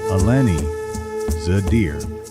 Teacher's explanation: Locals place the stress on the first vowel due to their distinctive Strandzha dialect.